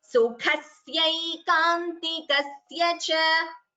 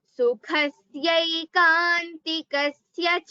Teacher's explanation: there is a stress before syai. So dvitvam double sa should be heard.